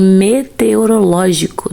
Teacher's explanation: É a antepenúltima sílaba tônica